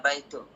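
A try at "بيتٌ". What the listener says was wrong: jangan baitu, baitun. Baitun ya, baris 2 ya. Baris 2 domatain ya. Baitun.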